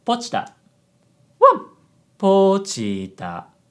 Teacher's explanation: So an example of high, low, low is pochita. Pochita. High, low, low.